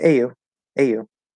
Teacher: Like AU, AU, there's no problem. But it wouldn't be AYO with an O sound; it'd be an U sound.